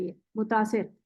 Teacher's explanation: और ये हमजा होता है यहां प मुतासिर ऐसे होता है ये मुतासिर बेसिकली हमजा गायब कर देते हैं